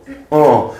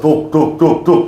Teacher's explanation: 이 입술 모양은 오, 즉 원순이고 실제 발음은 아 소리를 내면 요게 후설 저모음이라고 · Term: 아래아